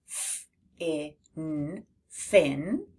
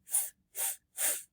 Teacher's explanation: Your voice stays off for this sound, so you won't feel your throat buzzing. Hold your hand near your mouth and you should feel a soft airflow. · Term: f sound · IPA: /f/